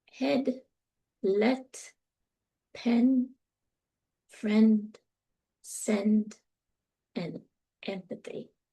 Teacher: even though it's a front vowel, it's made low. Your tongue is low in the mouth. Um, your jaw is in mid position.